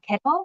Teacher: So number one was consonant plus syllabic L, found in kettle, for example. So in American English, weakened word ending L tends to realize as dark L